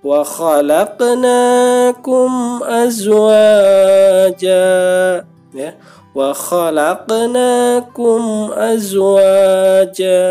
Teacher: ada huruf qaf mati ya, dipantulkan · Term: sugro